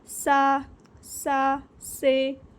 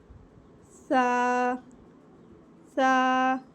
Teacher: इसको अदा करते हुए बहुत से लोग क्या करते हैं, सा से, ऐसे यानी कि सीटी की आवाज़ इसमें लाते हैं। तो इसमें सीटी की आवाज़ नहीं लानी, इसको पढ़ना है हमने सा,